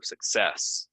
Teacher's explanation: stress goes second syllable